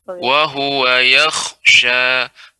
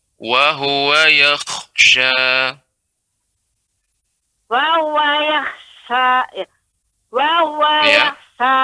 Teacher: Kha-nya dibaca dengan tebal, Ibu. Wa huwa yakhsha, dengan cara rahang bawah tidak ke bawah.